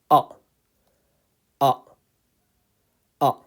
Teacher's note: So you keep your mouth slightly open and it's coming from the deepest part of the throat. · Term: al-hamza